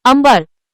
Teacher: अनुस्वाराचा उच्चार म या अनुनासिकाप्रमाणे होतो स्टेप एक योग्य पर्याय निवडणे अंबर या शब्दात अनुस्वारापुढे ब प वर्गातील आहे त्यामुळे अनुस्वाराचा उच्चार प वर्गातील अनुनासिक म सारखा होतो